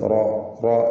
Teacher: റായിന് പൂർണ്ണമായ തഫ്ഹീം കൊടുത്ത് തടിപ്പിച്ച് സ്വരഭാരത്തോടെ ഉച്ചരിക്കുക.